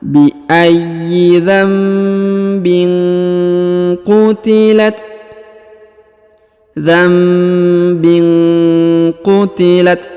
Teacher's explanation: Dzambin ya, bukan lagi dzanbin, tapi dzambin, berubah jadi mim berubah menjadi huruf mim ya. Kemudian huruf ba berharokat in, tanwin ya, bertemu dengan huruf q. Huruf q berharokat u ya, maka tadi didengungkan dan disamarkan.